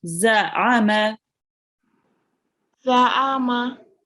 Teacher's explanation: you pronounce the ayn with the throat as well